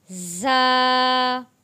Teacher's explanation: ज़ा जब हम पढ़ेंगे तो हमारे दोनों दांत ऊपर वाले और नीचे वाले जोड़े जाएंगे और अदा किया जाएगा ज़ा।